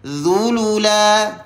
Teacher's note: Apabila sebut huruf dha ni kita muncungkan kerana berbaris di hadapan.